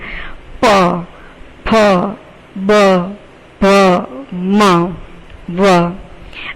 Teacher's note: આ જ્યારે તમે બોલો છો ત્યારે તમારી જીભ છે ક્યાંય પણ તમને સાથ આપતી નથી અને માત્ર હોઠ જ તમને સાથ આપે છે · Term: ઓષ્ઠ્ય